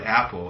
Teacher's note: saying it like the word apple, it doesn't begin with a vowel. It's the glottal stop.